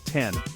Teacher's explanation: Start with a crisp T sound, then the short N